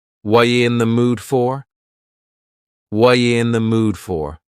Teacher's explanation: The word are is gone, and the word you has been reduced to ya. So when we link together, what and you, super fast.